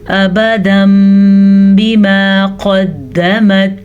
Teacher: तो जब भी नून साकिन के बाद या तनवीन के बाद बा आ जाए तो नून साकिन और तनवीन को इस मीम में बदल देते हैं। तो बजाय तनवीन के या नून साकिन के मीम पढ़ा जाता है